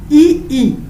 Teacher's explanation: ई ई का उच्चारण तालु से होता है।